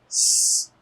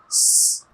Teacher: you will feel that there is no vocal cords vibration while producing the S sound like S. So it is voiceless sound, you can say.